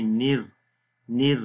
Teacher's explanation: نون کو را کے ساتھ ملائیں گے، نر، نر باریک پڑھیں گے